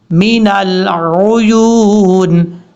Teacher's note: یا کے بعد جو واو ہے، یہ واو مدہ ہے، واو مدہ کی وجہ سے اس کو لمبا کریں گے 1 الف کی مقدار